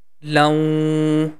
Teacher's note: the lan sound is going to connect with waw because of connecting sign, and the sound becomes laun